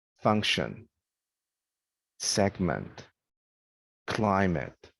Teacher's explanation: example this one here stress the first syllable function segment climate so we emphasize the first one in a two-syllable noun